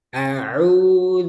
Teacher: Nah, ain jangan masuk hidung ya. Jangan ini masuk hidung.